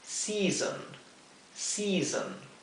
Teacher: la primera sílaba se pronuncia más larga que la segunda sílaba.